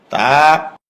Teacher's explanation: জিহ্বার আগা উপরের দাঁতের গোড়ায় ভিতর দিয়ে লাগবে, মুখ খুলে দিবে, এক আলিফ পরিমাণ লম্বা হবে।